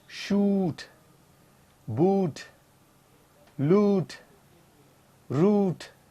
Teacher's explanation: The lips are rounded when I pronounce this sound. Long vowel sound.